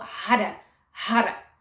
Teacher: The Hara is almost like it's in between the R and the D at the end.